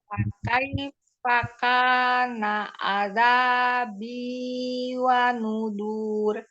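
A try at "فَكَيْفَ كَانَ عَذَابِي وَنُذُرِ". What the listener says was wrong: Pendek wa nudur. Cepat. Nah, kurang alirannya aja nggak apa-apa. Jadi jangan berubah-ubah temponya.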